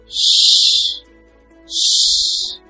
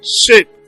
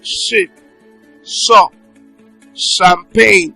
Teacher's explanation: So you can hear the friction noise, sh, as in the word shape.